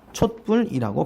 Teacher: 촛불이라고 발음했다는 거죠. 그 말은 디귿 소리가 첨가된 다음에 그것에 의해서 된 소리가 됐다. 첨가 현상이 일어났네요.